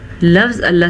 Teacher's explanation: عین کے مخرج کا دھیان رکھیں گے، جمیعا نہیں پڑھنا، جمیعا پڑھنا ہے. ان اللہ، لفظ اللہ سے پیچھے نون کے اوپر زبر ہے تو لفظ اللہ کو ہم پر پڑھیں گے، جبکہ نون کا غنہ ادا کرنا لازمی ہے. علی کل شیء قدیر، علی واضح کر کے پڑھنا ہے، کل شیء قدیر.